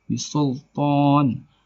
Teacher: Cara membacanya boleh panjang 4 harakat atau lebih dari, juga boleh 2 harakat. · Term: mat arid lisukun